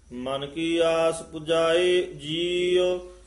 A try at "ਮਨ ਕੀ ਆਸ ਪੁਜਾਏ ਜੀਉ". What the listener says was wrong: ਇਹ ਮਨ ਕੀ ਇਕੱਠਾ ਨਹੀਂ ਬੋਲਣਾ, ਮਨ ਕੀ ਆਸ ਪੁਜਾਏ ਜੀਉ।